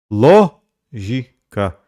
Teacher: Lógica é uma palavra proparoxítona, portanto acentuada na antepenúltima sílaba, seria a sílaba tônica.